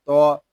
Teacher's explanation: لام کھڑا زبر لا، اعلی، تو زبر تو، تو یہ حروف مستعلیہ میں سے ہے، اس کو پوری یعنی موٹا پڑھیں گے